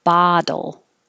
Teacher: this looks like an o but sounds like an ah